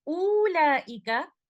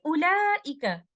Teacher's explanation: In the word ulaika, the letter waw has this round zero on the top, and instead of reciting this word like this, ulaika, we say ulaika, and there is no waw mad in the recitation. We will not recite this waw as a mad waw.